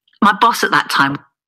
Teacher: What students would expect to hear as at and that, yeah, with a full vowel, a plus the consonant t, becomes a schwa. So the vowel is reduced to a schwa and the t is elided completely. It disappears.